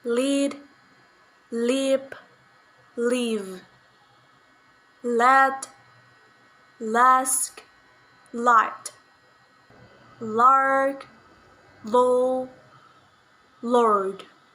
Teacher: voiced alveolar lateral sound